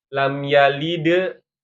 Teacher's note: Kalau yang sugro itu berarti di tengah ya. Huruf qalqalahnya di tengah dalam kondisi sukun kan gitu ya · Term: qalqalah sugro